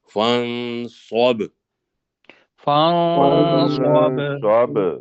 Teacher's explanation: اخفا ہے اور صوت کو موٹا کرنا ہے اور با پہ پھر قلقلہ کرنا ہے